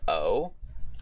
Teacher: which is the back, mid-close, rounded vowel. Essentially the opposite to E in a lot of cases.